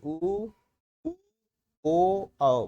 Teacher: आपका जो होंठ होंगे वो कैसे हो जाएंगे? आपके गोल हो जाएंगे, व्रत की तरह हो जाएंगे। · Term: व्रतमुखी